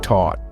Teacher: The th sound is often pronounced as a d or a t, making thing sound like ting and thought like taught.